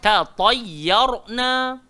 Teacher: Yang tebal ra bukan ya. Jangan baca tatayyur.